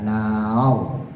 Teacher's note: roknya dibaca tebal, tafkhim karena jatuh setelah fathah.